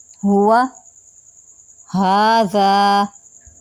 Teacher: بغیر جھٹکے کے آواز کے تار تھوڑے کھلے ہوتے ہیں اور نرم سانس خارج ہوتی ہے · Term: ہا